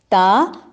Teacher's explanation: تا زبان کی نوک اور ثنایا علیہ کی جڑ یا مسوڑے